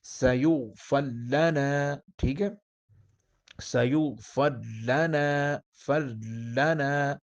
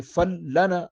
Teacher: آگے ادغام خالص مع الاشمام، اب خالص بھی ہوگا، یعنی فل لنا، را کو جو ہے لام میں بدلیں گے، مدغم کریں گے، تو اس میں جو ہے وہ اشمام بھی ہوگا۔